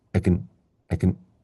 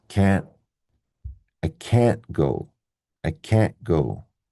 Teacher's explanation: If it's negative, we stress it. That means we say the full vowel pronunciation. And nice and long.